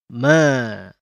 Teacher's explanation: atau di monyong Mba dikeluarkan dari dua bibir yang dirapatkan ma dikeluarkan dari dua bibir yang lebih dirapatkan